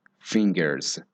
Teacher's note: The S actually has a Z sound, so it sounds like fingers.